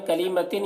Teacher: تنوین کے بعد سین ہے، حروف اخفا میں سے یہاں پر اخفا ہوگا، تنوین میں اخفا کریں گے